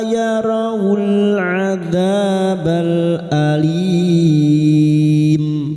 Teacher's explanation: Alim bertemu mad dengan huruf hidup yang dibaca waqaf mad arid li sukun. 4 harokat kita panjangkan.